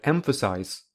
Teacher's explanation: the first syllable is the strongest so it has primary stress the second syllable has the reduced vowel uh so it has zero stress the third syllable has the full vowel